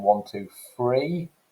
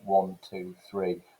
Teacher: the idea that you replace that fricative sound with a f sound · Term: th fronting